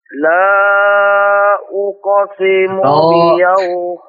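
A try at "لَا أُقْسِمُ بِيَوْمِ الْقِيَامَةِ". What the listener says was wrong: Ulangi sebentar. La tipis. La. Jangan lo. La. Nah, tipis kan?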